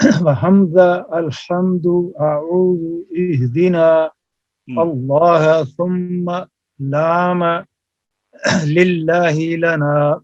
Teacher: پھر باریک پڑھو لام کو للہ میں اور لنا میں